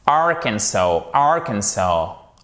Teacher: vous avez une voyelle longue sur la fin. Mais vous avez tout de même un accent tonique qui est sur les 2 premières lettres